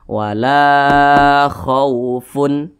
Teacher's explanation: ini huruf lam huruf lamnya berbaris ke atas maka dibaca panjang Mad Thobi'i panjangnya dua harakat atau kira-kira dua ketukan